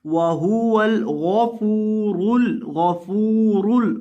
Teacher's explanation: गौइन को और रॉ को, इन दोनों को मोटा करके पढ़ना है